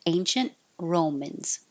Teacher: Hold the T on ancient so you don't hear it.